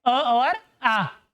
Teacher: यहां से आपके कंठ से जीभ के ठेठ नीचे से जो ध्वनि निकलेगी वह है अ और आ, और इसलिए इनको कहते हैं कंठीय स्वर।